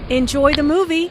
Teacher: Notice how the intonation rises on movie. This is said in a friendly way and is followed by an exclamation point.